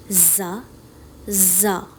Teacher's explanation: زبان سے ادا کیا جانے والا حروف ہے زا. زبان کا سرا جب نیچے والے دانتوں کی اندرونی حصے سے ٹکرائے تو زا ادا ہوتا ہے. اوپر اور نیچے والے دانت جب آپس میں ٹکرائیں اور زبان کا سرا نیچے والے دانتوں کے اندرونی حصے سے ٹکرائے تبھی زا ادا ہوتا ہے.